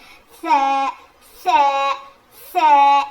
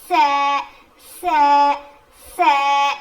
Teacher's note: जुबान की नोक को सामने के दो दांतों के किनारे को लगाने से अदा होता है।